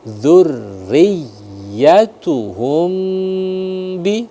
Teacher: ra itu dia karena dia berharokat kasrah, ya maka dibaca tarkik tipis